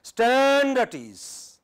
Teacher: So you start on high and come to low. This is what happens when you give commands, when you give orders.